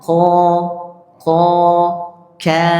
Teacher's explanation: Kalau kaf ya, dia bunyinya tipis ka. Kalau qaf bunyinya isti'la tebal.